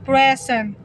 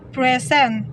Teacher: in the word present as a noun meaning give, the stress in the first syllable